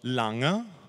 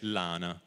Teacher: la presenza della n velare nella sillaba finale prima di una vocale ad esempio quindi la parola lana si pronuncia a Genova, a